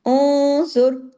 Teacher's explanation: نون ساکن کے بعد زوا ہے، اخفا بھی ہوگا، بھاری اخفا ہوگا، آواز میں بھاری پن، آواز تھوڑی ناک میں جائے گی نا کر کے، تو آواز تھوڑی موٹی ہو جائے گی، کیوں؟